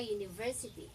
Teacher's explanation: parang pag nag-pronounce ka ng university, parang may Y sa unahan ng salita. Okay?